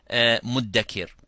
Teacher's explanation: say dal as a dry letter without any air coming. They do not differentiate between dal and ta.